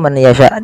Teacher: memasukkan nunnya kepada huruf ya dan hukumnya yaitu idgham bighunah